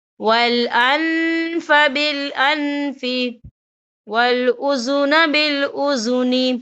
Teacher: نون ساکن کی آواز کو ناک میں چھپائیں گے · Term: اکفا